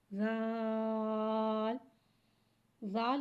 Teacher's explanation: زال حرف لثاویہ ہے، زبان کا سر اور اوپر کے دانتوں کے اندرونی کنارے سے ادا ہوتا ہے۔